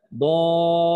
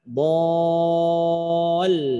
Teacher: Jangan sampai diringankan bunyi lamnya sehingga satu huruf hilang. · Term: lam tasdid